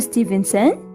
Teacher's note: I used rising intonation.